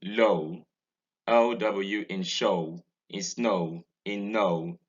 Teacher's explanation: Vowel 17 is the diphthong o. It's a mid-central closing diphthong. It occurs in OW in low, OW in show, in snow, in no, in EW in so.